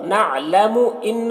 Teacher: نون مشدد غنہ کے ساتھ میں پڑھیں گے